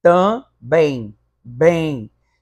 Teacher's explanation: esse M tem som de I no finalzinho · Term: ditongo aparente